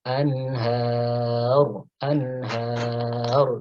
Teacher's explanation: karena ra di akhir kalimat, ya, ada sifat tafkhim, ya. Tafkhim atau dibaca tebal.